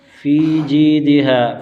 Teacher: فی پر یا مدہ، جی پر بھی یا مدہ، ہا پر الف مدہ، ان تینوں پر ایک ایک الف کھینچ کر پڑھیں گے